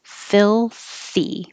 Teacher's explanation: Hold your tongue in the L position for a little while so that you can hear the L before making the TH.